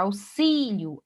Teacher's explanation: Agora, auxílio, aí sim é acentuado, porque o si, que é a sílaba mais forte, paroxítona terminada no ditongo ió.